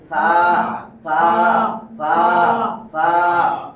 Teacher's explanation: জিহ্বার আগা দাঁত উপরে দাঁতে লাগাইয়া বলবো সা